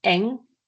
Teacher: So you pronounce N in the same place where you pronounce K. So with K, your tongue touches the roof of the mouth.